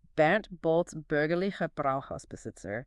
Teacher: Almost every word starts with that bilabial stop. It needs incredibly fast, repeated lip closures and releases.